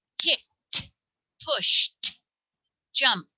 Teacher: If the final consonant is unvoiced, if it's not a sound that vibrates, like sh or ch or p or f, we say t